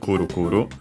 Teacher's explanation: it should be accented just like most onomatopoeias on the first syllable